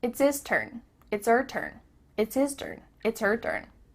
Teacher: The H at the beginning of his and her is cut off.